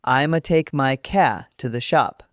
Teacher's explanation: First, car in the southern drawl often sounds like ca. The R at the end softens significantly, so car becomes ca.